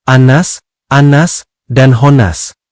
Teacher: wajib dibaca mendengung dan ditahan selama 2 ketukan atau 2 harakat atau 1 alif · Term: Gunnah